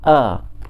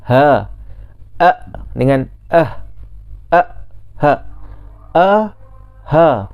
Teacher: hamzah dan ha ni berkongsi di tempat yang sama dalam makhraj huruf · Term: tenggorok yang bawah